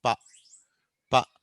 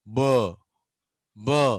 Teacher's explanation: ప అన్నప్పుడు ఇక్కడ పెద్ద వైబ్రేషన్ ఉండదు, ప ప. కానీ బా అన్నప్పుడు చూడండి, బ బ అన్నప్పుడు ఆ వైబ్రేట్ అవుతుంది అన్నట్టు. సో ఇలా వైబ్రేట్ అయితే అది వాయిస్డ్, వైబ్రేట్ కాకపోతే వాయిస్లెస్.